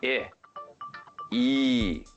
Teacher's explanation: both sounds meaning I and E are high it means that the tongue is lifted towards the roof of the mouth like this these are front vowels I bet you can tell · These are front vowels. I bet you can tell yourselves how to pronounce them. Right. Put your tongue forward in your mouth.